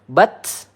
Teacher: ta sukun ya sifatnya haes. Ada udara lembut yang keluar seperti berdesis gitu ya.